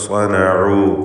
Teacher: ഐന് മഖ്റജിൽ നിന്ന് അഥവാ തൊണ്ടയുടെ മധ്യമെന്ന അതിൻ്റെ ഉത്ഭവസ്ഥാനത്ത് നിന്ന് പ്രത്യേകം ഉച്ചരിക്കാൻ ശ്രദ്ധിക്കേണ്ട അക്ഷരമാണ്. ഹൽക്കിൻ്റെ 6 അക്ഷരങ്ങളിൽ ഒന്നാണ്.